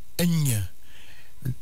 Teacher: Nasale vélaire simple sourde.